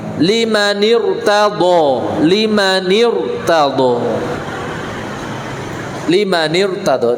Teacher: Ini sebelumnya sih kasroh, limani. Karena setelahnya ada hamzah wasol, roknya sukun, dibaca tafkhim.